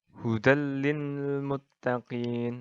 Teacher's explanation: memasukkan atau meleburkan nun mati dan tanwin tanpa disertai dengan dengung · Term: idgam bilagunnah